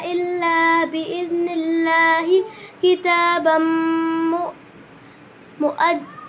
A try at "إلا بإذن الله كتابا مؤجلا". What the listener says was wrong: देखिए आपने बिइज़्निल्लाह पे सांस लिया है ना, अगर सांस लेना था तो ऐसे पढ़ लेते इल्ला बिइज़्निल्लाह।